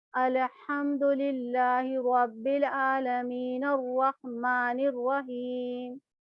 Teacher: نون کو را میں ملا کے پڑھیں گے اور الف اور لام دونوں نہیں پڑھا جائے گا